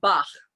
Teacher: It's pronounced like bach, right? It's the back of the throat. It's a sort of a harsh sound if you're not used to making it, and it may take a little bit of practice.